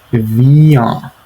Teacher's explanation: And notice how the ah sound is nasalized. You have to make it a nasal sound for the pronunciation to be correct.